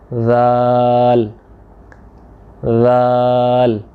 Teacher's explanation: ज़ुबान की नोक को आपने सनाया जो है आपके सामने वाले चार दांत हैं, ऊपर वाले दो और दो नीचे वाले, इनके किनारों से हल्का सा बाहर निकालना है। निकाल के टच करना है, महज छोटा थोड़ा सा जेंटली, आपने जोर नहीं लगाना है वहाँ पे।